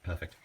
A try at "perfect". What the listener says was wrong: Perfect. With a T.